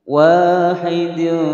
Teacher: Wahidin huruf dal adalah huruf qalqalah, dal yang berharokat sukun. Huruf dal adalah huruf qalqalah, maka harus dibaca memantul.